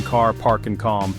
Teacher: A as in father is long, open and back, heard in car, park, and calm.